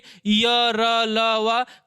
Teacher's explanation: कभी भी आप अंतस्थ का उच्चारण करिए, य र ल व, कभी हवा हाथ पर तेज नहीं लग सकती।